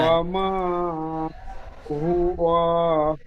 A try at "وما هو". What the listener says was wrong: হুয়া ওয়াও টান হয়ে যাচ্ছে, হুয়া ওয়াও টান হবে না।